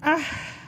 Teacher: ஹம்ஸ் சோ காற்று வெளிப்படுத்தி நல்ல நேரம் கொடுத்து சொல்லலாம்